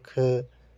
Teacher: इनके उच्चारण में फेफड़ों से बाहर निकलने वाली वायु की मात्रा अपेक्षाकृत जो होती है वो अधिक होती है। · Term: महाप्राण